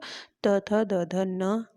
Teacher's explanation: जिन व्यंजनों के उच्चारण में जिह्वा की नोक ऊपरी दांतों का स्पर्श करती है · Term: दंत्य व्यंजन